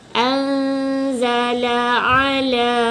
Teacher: La yang anzala ni tak panjang. La yang ala ni 2 harakat panjang. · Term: ma'asli